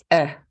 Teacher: So you're not stopping your airflow, but you are snapping that K sound. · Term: pinch